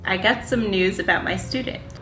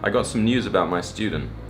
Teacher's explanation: The Americans just say ooh, but the English people add a y sound in there, and they say you.